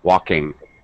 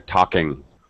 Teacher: So commonly those hard, called breathless sound, those hard sounds, we won't release them when we're talking. And definitely we don't want to release INGs. Walking. My tongue is still up there. Talking. You know, there's no ga or ka.